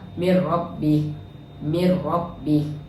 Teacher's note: Cara bacaannya memasukkan bunyi nun kepada huruf selepasnya tanpa dengung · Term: idgham bila ghunnah, idgham bila gunnah